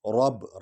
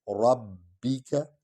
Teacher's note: را کو پر پڑھیں گے کیونکہ اس پر زبر ہے. ربک اور با جو ہے یہ حرف شفوی ہے، ہونٹوں سے ادا ہوگا.